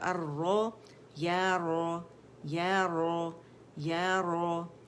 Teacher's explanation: زبر کے ساتھ پڑھیں گے موٹا